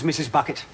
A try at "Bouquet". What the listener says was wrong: It's bouquet, Vicar. It's bouquet. Bouquet. The accent on the second syllable.